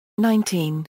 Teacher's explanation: when counting, such as 17, 18, 19, the stress shifts to the first syllable